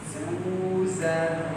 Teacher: ada huruf nun mati, nun sukun itu nanti dia mendengung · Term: huruf ikhfa